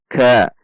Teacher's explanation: Perhatikan sifat dan makhraj huruf kaf. Ada dorongan udara saat mengucapkannya.